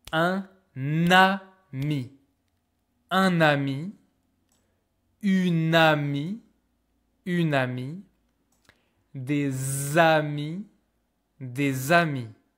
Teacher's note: even when there's no liaison, we still merge the words together